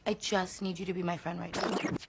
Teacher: Estas dos consonantes no crean el sonido de la CH, pero para que puedas entenderme un poco mejor, van a crear un sonido de CH con voz.